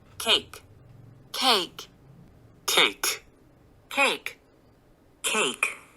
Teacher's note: 끄트머리 K 소리 이건 B하고 D처럼 stop 소리를 내죠.